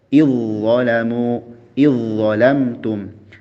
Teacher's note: Jadi zal dan dho berasal dari makhraj yang sama ya. Zal, dho dan sa. Dari ujung lidah bertemu ujung dua gigi seri atas. Ya. Sehingga ketika zal bertemu dho maka melebur ya. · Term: mutajanisain